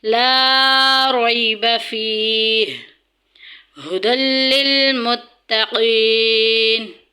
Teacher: یا ساکن پیچھے زیر آ گئی ہے، یا مدہ ہو رہا ہے، اس کو لمبا کریں گے۔